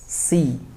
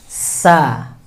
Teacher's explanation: Ujung lidah ya berhadapan dengan bagian gigi seri bawah. Pengucapannya tipis, tarik, buka tipis, tarik tipis, mencucu, tipis, tarik. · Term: huruf sa